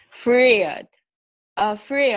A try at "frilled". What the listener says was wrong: See, you're getting there, except that your tongue isn't touching your teeth. I could see it's not. So you're coming from the I, from the RI to an L, but you're not quite getting there. It's frill.